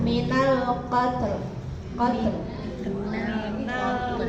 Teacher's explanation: Tnya jangan ikut tebal ya. Tnya tipis.